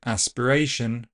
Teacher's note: A s will kill the aspiration, meaning that in the word aspiration, there is no aspiration.